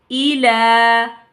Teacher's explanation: हमने हमज़ा को भी और लाम को भी एक अलिफ के बराबर खींचा है, क्योंकि हमज़ा के नीचे खड़ा ज़ेर है और लाम के ऊपर खड़ा ज़बर है